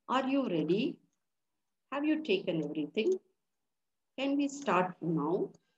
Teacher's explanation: hot hot so you can notice the rise in the voice when it comes to asking series of questions there is a fall and a rise in the intonation